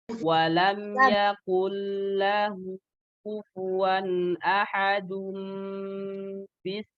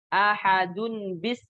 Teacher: Bukan ahadun bis, bukan, tapi bukan juga ahadu bis, bukan, tapi ahadum. Terjadi iklab di situ. Suaranya berganti mim, makanya di sini ada mim kecil.